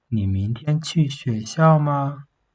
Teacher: The predicate is stressed, and the end of the sentence has a rising intonation. for Chinese is like this, rising intonation, and the predicate is stressed a little bit.